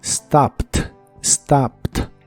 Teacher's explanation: Es similar a la forma del presente, solo que en este caso la ed que se le agrega al final se pronuncian como T.